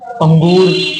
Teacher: अनुनासिक इसमें तुम्हें नाक नाक की जरूरत होगी, नाक से भी हवा निकलेगी।